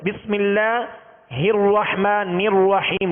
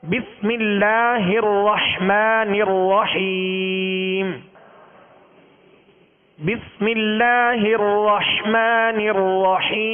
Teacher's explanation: را کو پر یعنی موٹا کریں گے مگر ہونٹوں کو گول نہیں کریں گے